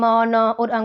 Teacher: जो साउंड आती है उनकी वो नाक से ही आती है इसलिए उनको नेजल साउंड बोला जाता है